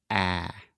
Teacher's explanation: it is a very open Sound which means our tongue position is low and our mouth is very open so imagine opening your mouth as much as possible and then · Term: a sound